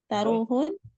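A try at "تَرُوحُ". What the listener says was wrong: jangan ditanwin, kan fi'il.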